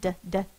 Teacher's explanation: My tongue is tapping on the top of my mouth like a drum.